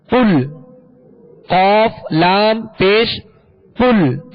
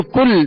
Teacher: یہ قل جو ہے اس کو پر پڑھیں گے، قاف کو، دو نقطے والا قاف ہے اور حروف مستعلیہ میں سے ہے، اس کو پر پڑھیں گے، موٹا پڑھیں گے، اس کو باریک نہیں پڑھیں گے. قل، قاف لام پیش قل، اس کو کل باریک نہیں پڑھیں گے بلکہ پر پڑھیں گے، موٹا پڑھیں گے.